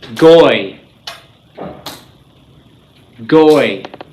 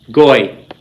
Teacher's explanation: They form together in a diphthong. Goy. Okay, you can still hear the yod there, but it's merging with the cholim.